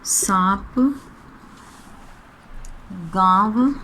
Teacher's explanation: अनुनासिक में ध्वनि मुख व नाक दोनों से निकलती है